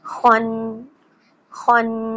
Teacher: خو heavy letter ہے, اس کو پڑھتے ہوئے ہمارے ہونٹ تھوڑے سے گول ہوں گے